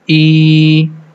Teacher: And the function of this sign is we are going to stretch the kasra sound for two count. The sound becomes e. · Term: standing kasra